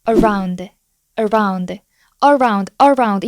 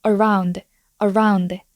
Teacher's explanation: 맨 앞에가 슈아 발음 기호이기 때문에 힘없이 떨어지듯이 발음해 주시면 돼요